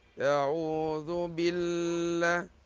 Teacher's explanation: Kalimah al-jalalah dibaca nipis.